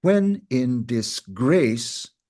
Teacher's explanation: We don't pronounce disgrace, some might, but it's the actual pronunciation is disgrace with the emphasis on the second syllable